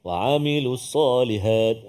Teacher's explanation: Dia tengah rongga kerongkong kita.